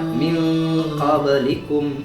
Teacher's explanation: Minnya jadi ang dikit. Min. Jadi samar.